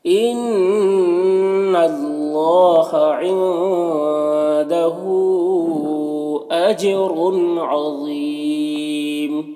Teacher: ان نون مشدد غنہ ہوگا اور یہاں پر اللہ کے لام سے پہلے نون کے اوپر زبر ہے تو اللہ کے لام کو پر پڑھیں گے، کھڑا زبر ہے، ایک الف کے برابر کھینچیں گے، نون میں اخفا ہوگا۔ · اور ہا میں جو مد ہے یہ مد منفصل ہے، اسے 3 سے 4 الف کے برابر کھینچ کر پڑھیں گے۔ جیم میں قلقلہ ہوگا، جیم کی آواز اپنے مخرج سے ٹکرا کر نکلے گی اور رو کے اوپر 2 پیش کی تنوین ہے تو رو کو پر پڑھیں گے اور تنوین کے بعد عین حروف حلقی میں سے ہے تو اظہار ہوگا، اسے جلد پڑھنا ہے۔